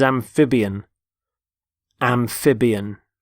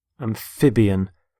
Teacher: Notice the stress on the middle syllable, amphib. Amphibian.